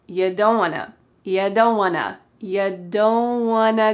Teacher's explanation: It is want plus to pushed together to become, Wanna.